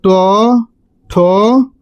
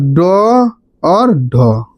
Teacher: इस सब का उच्चारण स्थान क्या है, मूर्धा